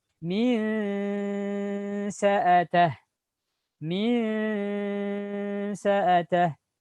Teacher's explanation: Jadi bunyinya asalnya n berubah menjadi mirip eng.